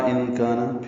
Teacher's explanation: ان کان میں نون ساکن کے بعد کاف آنے کی وجہ سے اخفا ہے، نون کی آواز چھپائیں گے. کان میں کاف باریک ہے، یہ الف مدہ ہے، 2 حرکات لمبا ہے